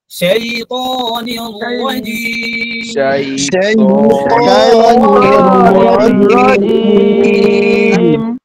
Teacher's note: শাই বলার সময় ঠোঁটটা যেখানে আছে হালকা ফাঁকা হবে কিন্তু গোল দিকে যাবে না